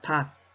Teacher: 쌍기역이 기역으로 바뀌어서 소리가 납니다. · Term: 음절의 끝소리 규칙